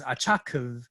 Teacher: it ends with a syllable with lexical tone 3-5